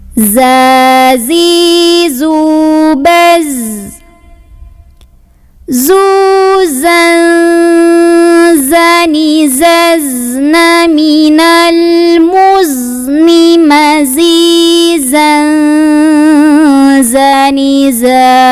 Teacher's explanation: Nah, ini ujung lidah tempel ke gigi seri bawah. Suaranya seperti suara lebah, ada desisan zzz, tapi jangan ada anginnya. Nah, nanti hati-hati ketika sukun, masih suaranya alirkan, hati-hati nggak boleh keluar angin, suara aja yang ngalir, sifatnya rokhawah, tapi tidak ada angin, jadi jahar. · maka bunyi tanwinnya bukan an lagi, melainkan sudah samar-samar ke zai. Jadi bukan zan, tapi sudah siap-siap mau bunyiin zai. · Huruf zai ini keluarnya dari ujung lidah, ditempel di gigi seri bawah.